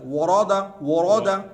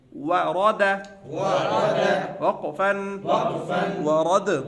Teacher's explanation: ورد را موٹا کریں گے, واو باریک. ورد آگے بھی پتلا ہے پیچھے بھی پتلا ہے, بیچ والا را موٹا ہے.